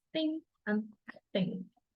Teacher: Place of the articulation is velars, formed by putting the back part of the tongue against the soft palate. · Put the back of your tongue against the roof of your mouth. Use your voice and let the air escape through your nose. The manner of articulation is nasal, or when a complete closure is made somewhere in the mouth.